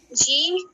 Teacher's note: جیم کو زبان کی درمیان تالو سے لگا کر پڑھا جاتا ہے